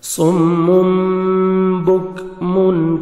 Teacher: نون کو میم میں چینج کرتے ہیں، جس کو بولتے ہیں اقلاب. تو نوز میں ساؤنڈ لے کے جاتے ہیں. صم بکم، کاف کا لائٹ سے ساؤنڈ آئے گا.